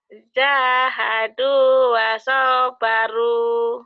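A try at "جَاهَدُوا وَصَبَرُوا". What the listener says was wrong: Kok panjang soalnya? Soalnya kan gak ada manjangin. Jahadu wasobaru. Ayo pendek. Iya gitu.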